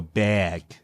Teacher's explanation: they don't want to say bag and drop their jaw they'll go bag and like smile